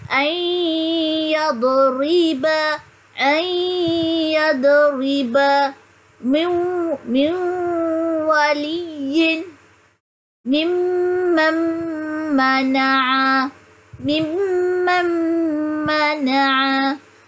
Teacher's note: Cara bacaan dia menggabungkan bunyi nun dengan huruf selepasnya berserta dengung. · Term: Idgham ma'al gunnah